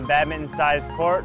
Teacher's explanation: He's doing a glottal stop for the T in badminton.